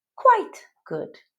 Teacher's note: With the stress on the first word, usually said slowly.